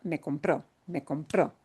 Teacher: we need to punch that O at the end a little bit more